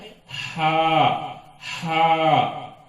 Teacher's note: حلق سے اپنے اندر کی پوری ہوا باہر ایک دم پھینکنے سے نکلتا ہے